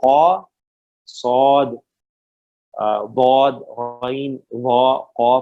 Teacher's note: یہ جو 7 حروف ہیں نا، یہ موٹے ہیں، خوب موٹے پڑھے جاتے ہیں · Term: مستعلیہ حروف